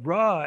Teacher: If you say ruh, it's more of a schwa